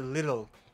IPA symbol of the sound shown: ɾ